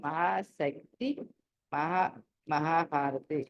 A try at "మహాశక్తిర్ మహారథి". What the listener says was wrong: ఇక్కడ మహాశక్తిర్ మహారథి అని చదవాలి. అన్ని చోట్ల ఎక్కడైతే ర ఉందో అది రాలు పలకాలి మీరు అన్ని చోట్ల.